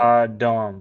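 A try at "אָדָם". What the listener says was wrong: Yeah, as Adam. I mean, in pronunciation, if we're going to go for more Hebrew pronunciation, we would say Adam with that emphasis on the last syllable, Adam. But yeah, it's our English word Adam.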